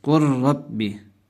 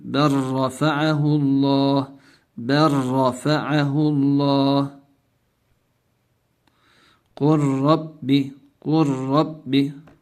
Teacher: Cezimli lam geldi. Sonra ra geldi. Birleştiririz. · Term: idgam mütekaribeyn